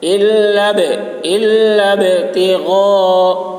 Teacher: غین کو حلق سے ادا کریں گے